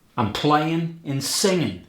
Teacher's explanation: there's dropping the G in the ing